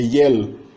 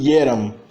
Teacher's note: Observa que os pronomes começam com e, esse e é pronunciado como ie.